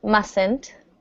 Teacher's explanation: notice the first T is silent